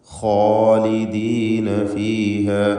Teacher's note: ഖാഇനും അലിഫിനും തഫ്ഖീം കൊടുക്കണം, സ്വരഭാരത്തോടെ ഉച്ചരിക്കുക. ഇസ്തിഅലാൻ്റെ അക്ഷരമാണ്.